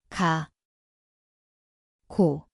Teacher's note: See kõlab nagu kika, koht on keele tagaosa.